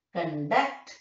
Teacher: If it is a verb, you know, the second syllable. Conduct, second syllable is stress.